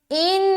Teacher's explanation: نون کے اوپر شد ہے لہٰذا رکاوٹ ہوگی یعنی کہ غنہ کریں گے